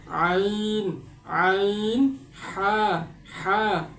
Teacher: হলকের মধ্যখান থেকে আইন হা উচ্চারিত হয়।